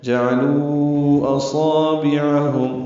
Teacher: جعلو اصابعہم، حمزہ اقصی حلق سے ادا کریں گے، صاد پر پڑھیں گے، الف مدہ ہے، تو حرکات لمبا ہے۔